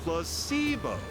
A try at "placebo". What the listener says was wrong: The stress is on the middle syllable.